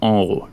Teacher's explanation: nasal because it's like reverse inheriting the nasal voiced properties of the M sound, right? Because when you do an M sound, you're pushing air through your nose and your voice is coming through your nose.